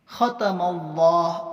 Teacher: اللہ کے لام سے پہلے زبر ہے اس لیے اللہ کے لام کو پور پڑھیں گے۔